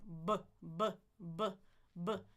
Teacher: I love the ones where they include the lips like a B. Two lips together. Explode. Vibration.